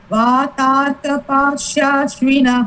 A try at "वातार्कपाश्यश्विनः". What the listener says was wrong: Pashya, you are saying. Pashya is not there. Pashyashvinah.